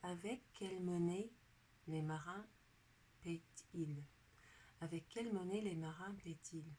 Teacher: because there's a T in between the end here and the subject pronoun, we pronounce that T because it's preceding a vowel